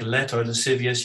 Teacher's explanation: in words like let or lascivious you have a clear l